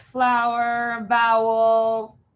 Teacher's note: have different examples flower vowel those are again slightly different but it's the same type of owl sound sometimes with a little schwa at the end